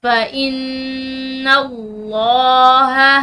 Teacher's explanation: فَإِن یہاں پر نون مشدد ہے، تو نون مشدد پر ہم غنہ کریں گے. · لفظ اللہ کی لام موٹی پڑیں گے کیونکہ اس کے پیچھے والے حرف یعنی کہ نون پر زبر ہے.